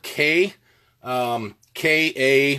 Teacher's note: I would suggest using the back part of your tongue to cut the air off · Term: spit note